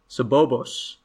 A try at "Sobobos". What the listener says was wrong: There's an S on the end of that, right? It's not Sobobo.